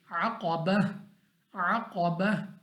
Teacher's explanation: यानी कहने का मकसद ये है कि आपके वक्फ करने के वक्त, जब आप वक्फ करें उस वक्त आपकी जो आवाज़ है वो हा पे जाके ख़त्म हो और हा वाज़िया अदा होना चाहिए · कौफ मुस्तालिया में से हमने मोटा पढ़ना है। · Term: हा साकिन